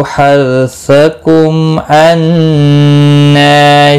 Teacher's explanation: हर्सकुम, हर रौ साकिन से पहले जबर है इसलिए पुर पढ़ा जाएगा रौ साकिन। मीम साकिन के बाद हमजा, इजहार शफवी होगा।